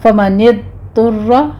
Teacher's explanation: ضاد کی آواز آپ زبان کی کروٹ کو اوپر داڑوں کے ساتھ لگائیے اور ادھر قلقلہ نہیں کرنا، اس کو سٹاپ کرنا ہے۔